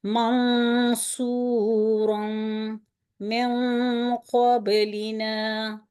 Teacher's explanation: تو اس جگہ پہ اخفا جو کریں گے وہ تھوڑا قدرے ناک سے غنہ جو ہے وہ بھاری ادا ہوگا۔ منصورا من قبلنا، تھوڑا سا زور لگا کے غنہ کو موٹا ادا کریں گے۔